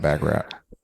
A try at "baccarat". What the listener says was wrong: It's Baccarat. You don't say that. You don't pronounce the T at the end.